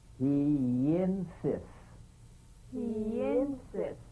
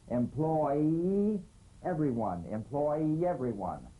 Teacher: Linking words that end in the Y buzz. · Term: The Y link